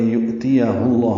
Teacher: ہا کو اقصی حلق سے ادا کرتے ہوئے لام اسم جلالہ سے ملائیں گے اور پر پڑھیں گے · حمزہ ساکن جھٹکے سے ادا ہوتا ہے، تا یا کو جلدی پڑھیں گے.